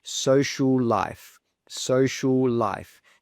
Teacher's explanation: so we simply say one of those L's